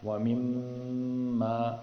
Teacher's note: میم کے اوپر شد ہے، تو میم پر جب بھی شد آ جائے تو غنہ کریں گے، تو یہاں غنہ ہوگا۔